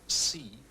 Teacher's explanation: So if we take a word like see, you see the unvoiced sound at the beginning and then the voice part at the end.